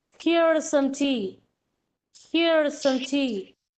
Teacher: Here and tea are given stress.